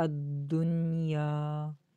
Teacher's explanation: دنیا میں نون، اس پہ نہ تو غنہ کرنا ہے اور نہ اس کو ہلانا ہے. اکثر اس کو دنیا، دونوں نو کی آواز آتی ہے، اس غلطی سے بچنا ہے.